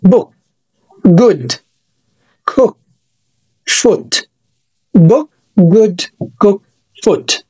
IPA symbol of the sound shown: ʊ